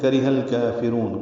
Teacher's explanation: کاف را ہا جلدی پڑھنے، ہا کو لام سے ملانا ہے، را باریک ہے، کاف بھی باریک ہے۔